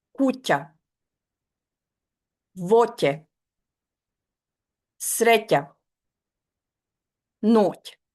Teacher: K is a soft one. The tongue flattens forward against the front of the palate right behind the teeth, and the sound comes out thinner and higher and shorter.